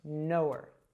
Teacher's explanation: I drop the h sound and I connected that w from no to her